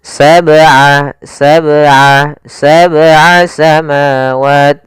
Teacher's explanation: tidak boleh ada tambahan hamzah misalnya sab aa sab itu ada tambahan kemudian yang kedua itu tidak boleh berhenti. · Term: qalqalah